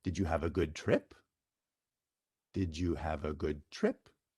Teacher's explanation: Yes, no questions have rising intonation.